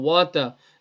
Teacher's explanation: So it's not watta, this wa zabar wa, ta zabar ta, wata. The wa does not join the ta.